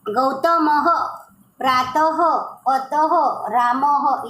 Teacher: उसको आप समझते हो विसर्ग, उसका प्रोनाउंसिएशन होता है ह।